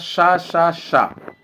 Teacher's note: तीनों सा जो होते हैं आपके ये आ जाते हैं अघोष में